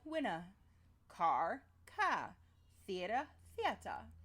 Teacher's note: it is non-rhotic, meaning that you drop the R at the end of words. So winner would sound like winner, car, ka, theater, theater.